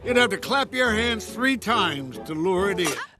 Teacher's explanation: The vowel in to is reduced to a schwa sound, Then, the T sound from it is another tap T, and the stress falls on the words lure and in.